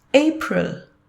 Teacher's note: the sounds of R and L have to be very softened and mellowed down almost blending with the rest of the phonetic sounds